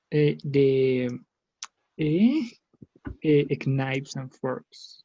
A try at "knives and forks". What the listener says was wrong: Exactly, knives and forks. The first K, it doesn't sound. It's like knives, knives and forks. You couldn't say key knife. It's just knife. Okay, just knife.